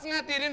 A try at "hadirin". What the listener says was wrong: Pakai haha. Jadi hadiri.